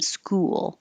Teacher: Almost two syllables for school because you have to round your lips and then unround them.